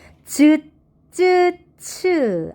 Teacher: 센 입천장과 앞 혓바닥에서 나는 소리다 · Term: 센 입천장 소리